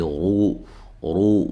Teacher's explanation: و مدہ ہے، اور را کو موٹا ادا کریں گے